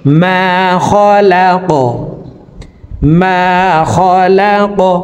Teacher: কফ জবর ক, কফকে ওয়াকফের ক্ষেত্রে সাকিন করে ফেলবো। কফ যেহেতু কলকলার হরফ, উপরের দিকে ধাবিত করে ধাক্কা দিয়ে কফকে সাকিন করতে হবে